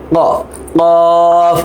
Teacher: কফ গলার মধ্যে একটা বাড়ি খেয়ে আসবে